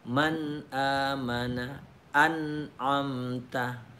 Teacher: Kalau dalam bacaan Al-Quran misalnya itu, kalau izhar itu misalnya an'amta, man amana billahi, man amana. Jadi itu bunyi nun mati ketemu alif mesti jelas atau nyata.